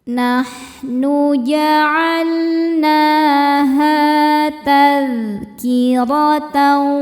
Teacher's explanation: Nahnu ja'alnaha tadhkiratan. Ra huruf ra dibaca tafkhim karena berharokat di atas yaitu harokat fathah. Cara bacanya ditebalkan.